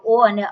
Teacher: ઓ અને ઔ નું ઉચ્ચારણ શું છે ગળા અને હોઠમાંથી થાય છે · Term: કંઠોસ્થમ